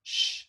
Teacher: it's a stretched out s it's a post alveolar or what we would call an alveopolatal often fricative and then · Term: sh sound